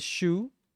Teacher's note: and the u sound you have to actually put your lips together